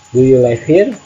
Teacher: Yes or no question. Use rising intonation. Voice goes up.